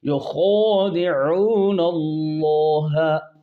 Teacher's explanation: عین کو وسط حلق سے نکالنا ہے، اللہ، اللہ کا لام خوب موٹا کرنا ہے ، اور کھڑی زبر میں الف مدہ بھی موٹا ہے۔ یخادعون